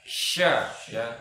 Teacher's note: tengah lidah menyentuh dengan langit-langit ya. Itu huruf shin ya. Nah, di sini huruf shin ini dia punya sifat tafashi, jadi menyebar di rongga mulut ya, semuanya sampai dikatakan sampai mengenai bagian dalam, gigi bagian dalam.